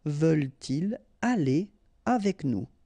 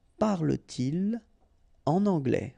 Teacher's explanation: so no liaison after your pronoun